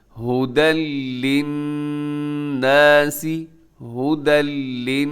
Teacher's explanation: للناس میں جب نون مشدد ہوتا ہے تو وہاں پہ غنہ کیا جاتا ہے